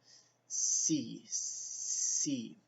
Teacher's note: I'm actually touching my teeth with my tongue